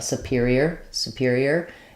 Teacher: what you don't want is superior with a long clear o it's going to have a very shortened somewhat reduced oo · both of these are stressed on the second syllable